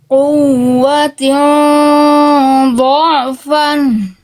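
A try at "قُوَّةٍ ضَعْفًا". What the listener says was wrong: Tapi tekan. Ain jangan jadi ragu. Dha'fan. Quwwatin dha'fan.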